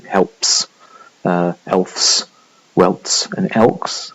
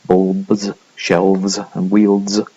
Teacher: following the voiceless versions of this you get a s, as in helps, elfs, welts and elks, and after the voiced one, as in bulbs, shelves and wields, you get the z one. So again, there's a restriction on voicing there, but you can get either s or z generally at the end of the coda in a 3 consonant cluster. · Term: voicing assimilation